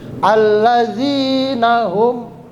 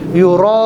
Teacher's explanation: Yuraun, panjangnya lebih. Beda dengan allazina hum, allazina itu cuma 2 harokat, tapi yuraun dia lebih panjang.